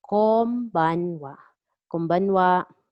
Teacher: Konbanwa again, pronounce N as M